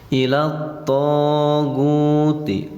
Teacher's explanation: to-nya mad tabi'i, alif sesudah patah, panjangnya 2 harokat, namanya mad tabi'i atau mad asli.